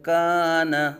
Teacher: الف سے پہلے باریک حرف آ گیا تو الف کو باریک پڑھیں گے